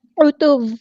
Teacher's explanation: عین کو مستحرک یعنی مڈل تھروٹ سے ادا کرنا ہے